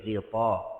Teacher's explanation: ghin, huruf tebal, dan bila dia berbaris bawah jangan nipiskan dia, jangan ghita, ghi, pasih lagi tebal.